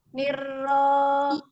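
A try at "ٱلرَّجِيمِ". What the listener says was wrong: Nah, tidak nir, takrirnya sekali, niro. Nirojim, bukan ro. ro itu memang istimewa. Tapi jangan angkat pangkal lidahnya, memang tidak mengangkat pangkal lidahnya, dia tebalkan saja. Tekan makhrajnya. Semakin dibuka, rahang bawahnya dibuka. Ro, gitu kan, bukan ro. Kalau mau monyong mau maju 2 meter juga nggak akan tebal itu. Takrirnya sekali, niro dibuka, niro, bukan niro.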